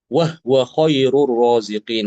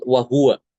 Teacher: Imam Al-Kisai membaca ha sukun hanya dibaca sukun ya, pada lafadz huwa